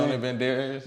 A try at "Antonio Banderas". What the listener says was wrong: No, you said Antonio Banderas. You said it with an accent. Banderas.